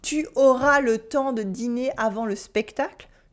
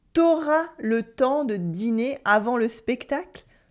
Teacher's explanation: cut the U in tu when it comes before the vowel A